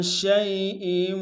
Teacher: شین کو یا کے سامنے لانا ہے، یا لین بغیر کھینچنے میں پڑھیں گے